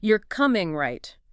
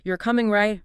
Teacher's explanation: you're coming right falling sounds more like a statement expecting agreement